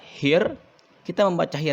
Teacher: kita membaca hir yang ada hukum alif lamnya, tetapi alif lamnya tidak terbaca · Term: alif lam samsiah